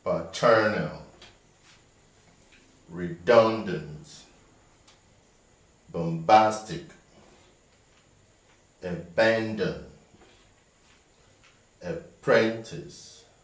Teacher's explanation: all these tri-syllabic words have their stress on the second syllable